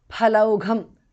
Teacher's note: pha and gha are mahapranaha